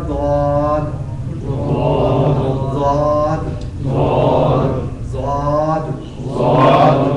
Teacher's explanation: آپ نے پچھلی داڑھوں کی جڑ سے ٹچ کرنا ہے. تو یہاں سے نکلے گا ضاد ضاد ضاد.